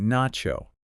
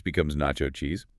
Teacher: The T and the u merge to create a chi sound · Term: connected speech